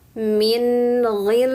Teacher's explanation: untuk membaca mim tasdid maka tahan dan dengungkan tiga harakat